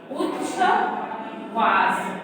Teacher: यदि ता के बाद शा होता है, शा मतलब तालव्य शा, तो ता के स्थान पर चा और शा हो तो छा हो जाता है